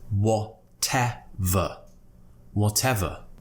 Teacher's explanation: we're not pronouncing the R at the end of the word. There's no it's just whatever.